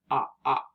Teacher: To make this sound, open your mouth wide into an O shape and drop your chin like this. You should feel a vibration in your throat as you say the sound because your voice is on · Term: ah sound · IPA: /ŏ/